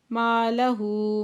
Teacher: لَهُ ماں پہ الف مدہ دو حرکت کھینچ کے پڑھیں گے، ہو پہ الٹا پیش دو حرکت کھینچ کے پڑھیں گے،